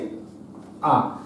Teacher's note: অ এর তার নিচে এবং আ সবার নিচে থেকে উচ্চারিত হয় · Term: নিম্নস্বর